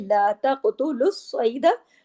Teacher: ला तक़तुलु स्वैदा, स्वाद भी मोटे हरूफ में शामिल है और स्वाद पे तशदीद है, सख्ती से जुड़ेगा, दो मर्तबा आवाज आनी चाहिए